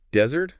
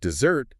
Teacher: So desert, first syllable stressed. That's the dry sandy place. Yeah. But dessert, second syllable stressed.